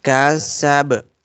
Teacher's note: This ba is out of echo letters, so whenever we will stop on it, it will give echo sound.